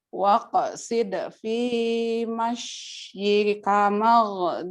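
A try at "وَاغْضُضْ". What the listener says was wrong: Wagdud. Bukan magdud. Wagdud. Wagdud.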